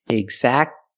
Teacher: Don't pronounce the T. Exactly. You go from the k sound to the l sound.